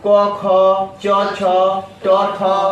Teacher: इनके उच्चारण में केवल श्वास का योग होता है। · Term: अघोष